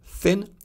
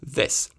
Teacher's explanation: TH in English can stand for [θ] like in thin and [ð] like in this.